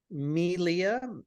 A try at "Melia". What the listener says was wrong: It's pronounced May, like the month. Leah. It's a Hawaiian name, so the E is pronounced like an A. That's where the accent is. So it's Melia.